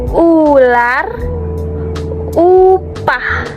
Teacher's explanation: Vokal U ini disebut sebagai vokal tinggi belakang. Jadi, saat kita mengucapkan U, itu lidah kita akan naik ke atas dan juga ke belakang. Dan yang paling penting, kedua bibir kita akan maju ke depan dan sedikit membundar, seperti saat kita bersiul.